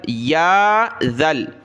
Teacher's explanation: ذال پر تھوڑی سی زبان کے نوک دانتوں سے باہر نکالیں، نرمی کے ساتھ اس کو پڑھنا ہے